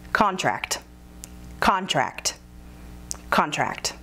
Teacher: Contract has two syllables, and we are using it as a noun. So the emphasis is on the first syllable.